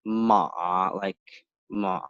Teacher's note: You go down and up. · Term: the third